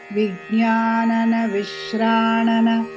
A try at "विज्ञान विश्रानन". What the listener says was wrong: அங்க வந்து விஞ்ஞான விஞ்ஞான மட்டும்தான் சரியா விஸ்ரானன